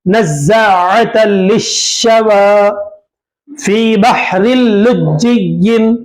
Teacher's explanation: دیکھیں آپ نزاعۃ میں یہاں پر تنوین ہے، تنوین کے بعد لام آ رہا ہے. یہ تنوین کے بعد لام آنے کی وجہ سے یہ ادغام بلا غنہ کا قاعدہ ہوگا، تو نون کی آواز کو لام میں ملا دیں گے